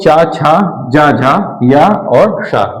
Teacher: ताल और जीभ के स्पर्श से बोले जाने वाले वर्ण। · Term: तालव्य